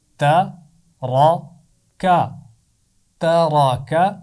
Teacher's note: نہ تا کی آواز کو موٹا کرنا ہے اور نہ ہی کاف کی آواز کو موٹا کرنا ہے · اس میں درمیان میں را زبر کے ساتھ موٹا پڑھا جائے گا. تا اور کاف کی آواز باریک پڑھی جائے گی.